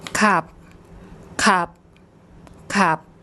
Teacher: you should have heard as a final consonant, it makes a P sound.